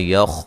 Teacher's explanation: خا کو موٹا ادا کریں گے، ہلانا نہیں ہے